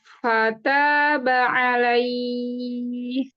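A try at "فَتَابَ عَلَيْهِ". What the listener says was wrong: La. La-nya agak ke e. Nggak boleh. Ala. Fataba alaih. Jadi la-nya sempurna dulu. La.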